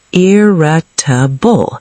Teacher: 4 syllables, stress on the first.